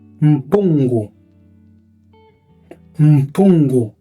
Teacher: A consoante M e N, quando são escritas no início, elas não nasalizam alguma vogal antecedente, mas sim elas nasalizam a consoante.